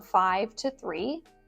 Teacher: my intonation just went up because there was a comma, so there's more to come. I'm not done with my sentence.